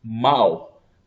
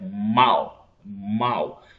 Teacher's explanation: Observe que o som sai diretamente pela boca não sai parte pelo nariz pelas narinas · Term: ditongo decrescente oral